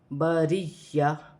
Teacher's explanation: اس را کے نیچے زیر ہے تو یہ را باریک پڑھی جائے گی